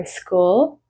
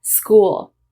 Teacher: The next problem is when a word starts with an S sound. We do not put an E in front.